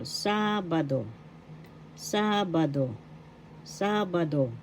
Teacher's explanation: The accent is in the first syllable, sábado.